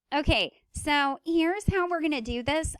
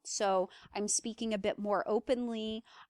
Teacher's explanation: I'm basically trying to create a more nasal sound by kind of closing off the back regions of my mouth so that I can utilize my nasal tract a little more. I also kind of scaled up the pitch.